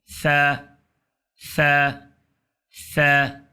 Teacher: ثا ہے، سیٹی اس میں نہیں ہے، یہ سین کی آواز اس میں نہیں آئے گی